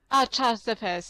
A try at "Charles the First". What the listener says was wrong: Okay, good.